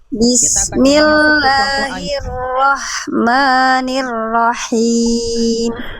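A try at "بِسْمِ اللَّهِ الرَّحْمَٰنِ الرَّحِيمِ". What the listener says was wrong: Sip, bagus.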